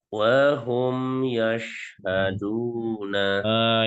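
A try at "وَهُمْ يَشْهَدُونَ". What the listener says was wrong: Itu lebih bagus.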